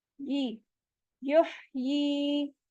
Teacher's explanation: या साकिन है, उससे पहले जेर आ रहा है, यहाँ या मद हो रही है, टू काउंट स्ट्रेच भी करेंगे।